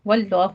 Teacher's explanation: واللہ میں لفظ جلالہ کو پر پڑھنا ہے